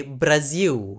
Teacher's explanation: in Brazil, L is often reduced to a W sound, like English W